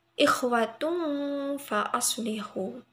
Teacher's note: Karena dhamma tanwin bertemu huruf fa itu bacaan ikhfa, jadi harus samar-samar.